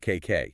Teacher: You just get a click in the back of the throat. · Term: half of ka